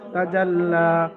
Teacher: লামের উপরে খারা জাবার, খারা জাবার আলিফ মাদ্দার সমতুল্য, সুতরাং লামকে আলিফ মাদ্দার মতো এক আলিফ পরিমাণ টান দিয়ে পড়তে হবে